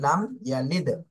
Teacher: লাম মিম সাকিনে কোনো গুণনা করা যাবে না, স্পষ্ট করতে হবে